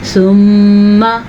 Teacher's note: جب میم کے اوپر شد آ جائے تو میم پہ غنہ کیا جاتا ہے